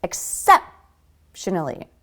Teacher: a lot of second syllable stress